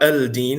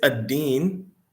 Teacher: it's a harf shamsi, so the lam is not pronounced. So ad-deen, ad-deenu, definite, the religion.